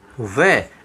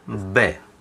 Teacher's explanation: जब हम वै का उच्चारण करते हैं तो दांत और ओष्ठ हमारे आपस में काम करते हैं, दोनों ही काम में आते हैं। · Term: दंतोष्ठ